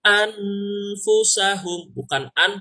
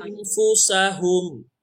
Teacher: Tapi karena dia ada huruf ikhfa, jadi bukan an, tapi berubah menjadi ang.